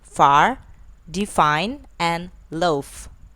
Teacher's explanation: F, which is voiceless, labiodental, and fricative